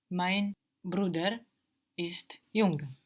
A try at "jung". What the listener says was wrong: It's like the English NG actually, so you don't really hear a G here. It's more nasal. Jung.